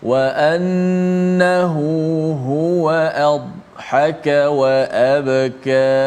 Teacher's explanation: Dibunyikannya, dikuatkan huruf dad, tetapi tidak dilantunkan seperti qalqalah, qaf umpamanya, aqa, seperti ta, nutafah, tapi dad tidak ada qalqalah.